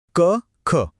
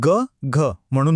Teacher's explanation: क ख उच्चारून बघा एक जोर जाणवतोय बरोबर म्हणून ही आहेत कठोर व्यंजन · आवाज किती सौम्य आहे सॉफ्ट आहे म्हणून ही झाली मृदू व्यंजन